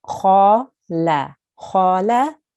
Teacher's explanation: And kha is a thick letter. So you make a thick sound and you round your mouth.